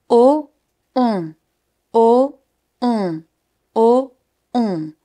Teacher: To make the sound ON, your mouth has to be round and pretty closed. Then you bring your tongue slightly backwards in the mouth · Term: son ON